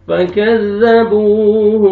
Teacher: کاف کو باریک پڑھیں گے, زال کو نرمی سے ادا کریں گے. فكذبوه, واو مدہ, با کو آپ نے کھینچنا ہے.